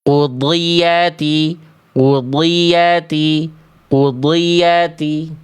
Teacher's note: Dhad kasroh juga dia tetap dibaca tebal.